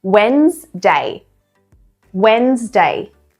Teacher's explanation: The D is basically silent here.